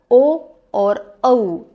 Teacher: ओ और औ ये इसको हम लोग कंठ और ओष्ठ दोनों से प्रोनाउंस करते हैं। इसलिए इसका उच्चारण स्थान हो गया है कंठष्ठौ। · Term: कंठष्ठौ वर्ण